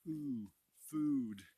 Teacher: the oo sound, like the word food, it's it's a more front sound, and you have to round your lips and put them like almost like a duck bill, like ooh, food.